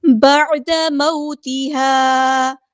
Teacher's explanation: عین کو غصہ حلق یعنی میڈل تھروٹ سے ادا کرنا ہے. بعد، دال کے زبر کو لمبا نہیں کرنا.